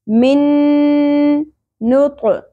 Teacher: ادغام. اور ساتھ میں غنہ بھی ہوگا, آواز کو ناک میں ٹھہرانا بھی ہے